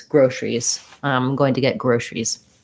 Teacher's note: We just go right from the sh to the R with basically dropping that schwa in there.